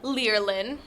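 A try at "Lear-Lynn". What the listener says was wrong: It really is pronounced Lear, you know. I know a lot of people would see it and say that it's liar, but it's actually Lear.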